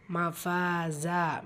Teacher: ஃபால அலிஃப் மத்தா இருக்கு இரண்டு ஹரக்கத் அளவு நீட்டம் கொடுத்து ஓதணும்